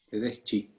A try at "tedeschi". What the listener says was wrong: Tedeschi. Tedeschi. Ya no tiene el sonido chi, es ki.